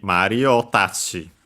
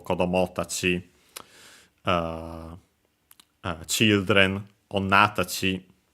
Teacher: the accent is always on the syllable before tachi itself